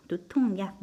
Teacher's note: 자음 더하기 뒤에 이응이 야가 왔죠. 그래서 니은이 첨가됐죠. 두통약, 니은 첨가.